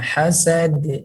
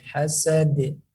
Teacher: Huruf dal di ujung lidah.